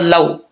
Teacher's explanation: अब यहाँ पर लाम वाव ज़बर लौ, वाव लीन है, लंबा नहीं करेंगे